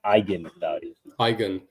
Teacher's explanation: The G is a hard G sound, similar to the G in go. The EN at the end is pronounced softly, almost like a nasal sound.